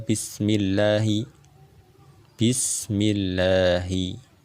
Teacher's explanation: Kita tarkikkan, kita tipiskan lam di lafaz jalalah yang ada di kata bismillah, karena dia didahului dengan huruf yang berharokat kasroh di bismi.